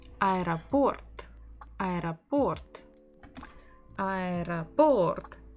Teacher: So we stress port, port. The final O is stressed.